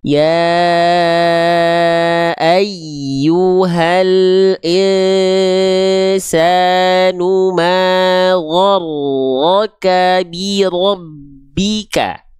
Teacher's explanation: Perhatikan bunyi vokal O-nya, bibirnya nggak perlu monyong, tapi rasakan lidah terdalam kita diangkat mengarah ke langit-langit di atasnya. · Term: huruf-huruf isti'la